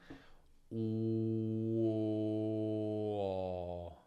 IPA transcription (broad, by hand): uuuoooɔɔɔ